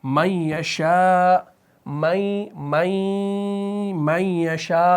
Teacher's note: یا اسی طریقے سے من یشاء، من یشاء، تو یہاں پر ہم غنہ کر رہے ہیں. یعنی یہاں پر ادغام تو ہو رہا ہے لیکن کامل ادغام نہیں ہو رہا، بلکہ اس میں ایک وہ ہم کھینچ بھی رہے ہیں اور غنہ بھی کر رہے ہیں، یعنی ناک میں اس کا تلفظ بھی آ رہا ہے